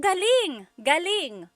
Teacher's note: So if the emphasis is on the second syllable, galing, that means good or great or excellent.